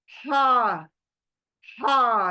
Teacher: झरने की आवाज आनी चाहिए क्यों ये बीच हलक के अंदर बीच से आ रही है और झर कर आ रही है